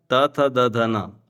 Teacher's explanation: आपकी जीभ है, दांत को स्पर्श करेगी। अगर आपकी जीभ दांत नहीं है तो ये आप ठीक से नहीं बोल पाएंगे। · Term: दंत्य